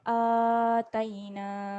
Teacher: Kalau kat sini hamzah sebelum alif. Kedudukan dia hamzah sebelum alif kita baca dia dengan panjang 2 harakat.